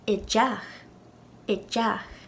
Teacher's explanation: we added a D to the beginning of the regular word for house, teach, and it changed the sound from a T sound to a D sound. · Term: eclipsis